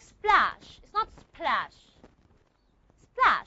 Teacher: I'm not going to aspirate the P. Why? Because it's preceded by the sound s